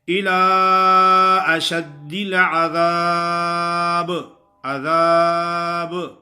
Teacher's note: کلکلا ادا ہوتا اس طرح ہے با میں کہ ہونٹ آپس میں ملتے ہیں تو فوراً ہی جدا ہوتے ہیں. اس کی مثال ایسے ہے جیسے ہوا کی بھری گیند زمین پہ مارو تو وہ زمین پہ ٹکتی نہیں ہے، فوراً اوپر اٹھتی ہے.